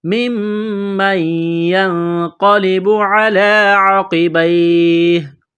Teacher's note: میم مشدد پر غنہ کریں گے